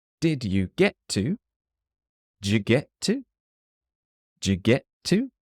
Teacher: the T at the end of get just disappears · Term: disappearing T's